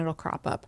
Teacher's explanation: And then we have the flap T in it'll.